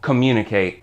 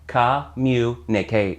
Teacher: that has two M's next to each other but as far as my ears go they only make one M sound